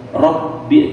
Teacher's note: ba-nya ditekan, bi-nya panjang 4 sampai 6